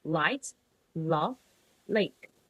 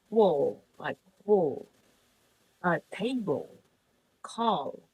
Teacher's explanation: the back of the tongue is raised toward the soft palate.